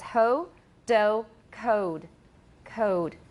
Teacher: in Southern British, Standard British English, they have more of an O sound to it. So it's ho, do, code.